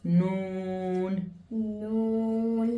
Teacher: We're making a round shape with the lips. It's like a whistling type of sound. You know when you whistle, the shape you make. · the Noon sound comes when the edge of the tongue touches the gums of the upper two front teeth